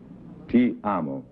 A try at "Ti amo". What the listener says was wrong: A little lower. Ti amo.